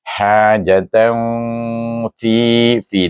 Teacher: Pertengahan antara izhar dengan idham dengan dengung dua harakat. · tanwin bertemu dengan huruf fa dibaca dengan ikfa hakiki wusta